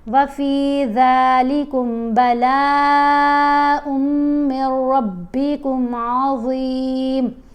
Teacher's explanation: میم کو را سے ملاتے ہوئے غنہ نہیں کریں گے